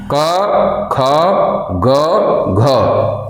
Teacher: जीभ जाके कंठ को अवरुद्ध करती है, रोकती है और जैसे नीचे आती है वैसे प्राणवायु बाहर आती है और इस वर्ण का उच्चारण होता है। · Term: क वर्ण